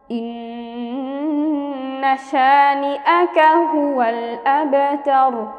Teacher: র পেশ রু, কিন্তু ওয়াকফ করলে আমরা রকে সাকিন করে পড়ব।